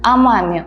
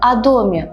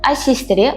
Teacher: O yozamiz, a talaffuz qilamiz.